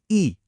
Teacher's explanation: आवृत्ता मुखी जिसमें होठ गोल नहीं होते